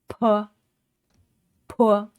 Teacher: shut the lips tightly to block the air, and then open them quickly and force the air out. So this sound is aspirated, just as in the English word pay.